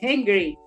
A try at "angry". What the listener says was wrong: Angry, sem o H. Angry.